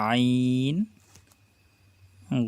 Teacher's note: তোয়াটা খালি, কোনো নক্তা নেই, জর উপর একটি নক্তা। আইন কণ্ঠনালীর মাঝখান থেকে উচ্চারিত হয়, চেপে বলতে হবে